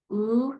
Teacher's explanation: O is a high back vowel you can feel that your tongue is not touching the tip of your teeth that it's pulled up and back when you make that sound · you can feel that your tongue is tense it is back and your lips are rounded